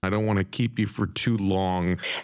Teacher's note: u reduces to yah when it's unstressed